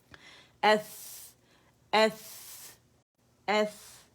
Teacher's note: اس میں رخاوا ہے ہمس ہے